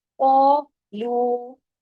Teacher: قاف کے ساتھ، قاف ہیوی ہے، الف ساتھ آیا وہ بھی ہیوی ہو گیا. قولو، لو، قاف ہیوی، لو باریک، قولو، ٹھیک ہے.